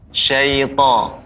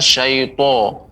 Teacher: dia pengucapan suaranya tidak dengan memunyungkan bibir. Syaito, bukan syaito tapi syaita.